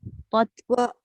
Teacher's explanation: Kalau bunyi tot, dia jadi qalqalah ta tu.